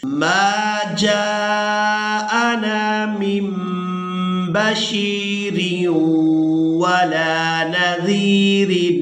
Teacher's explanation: جیم کو الف مدہ اور مد کی وجہ سے کھینچ کر ادا کرنا ہے